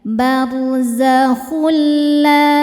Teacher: Barzakhul tanpa didengungkan, jadi nggak usah ditahan. Barzakhul, jadi cukup ditekan saja ya. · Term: idgham bila gunnah